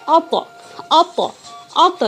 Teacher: ات تا ات، ات تا جو ہے فوراً رک جا رہی ہے، لیکن یہ جو حروف قلقلہ والی طا ہے اس میں آواز فوراً نہیں رک رہی ہے، بلکہ طا کے بعد چھوٹی سی آ لوٹتی ہوئی آ رہی ہے